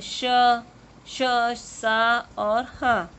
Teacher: इन व्यंजनों को बोलते समय हवा के तेज गति से मुख से रगड़ खाने के कारण ऊष्मा गर्मी पैदा होती है, इसलिए इन्हें ऊष्म व्यंजन कहते हैं।